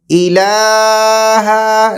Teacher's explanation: لام کو دو حرکات سے زیادہ بھی نہیں کھینچیں گے ہم، بالکل مطلب برابر دو حرکات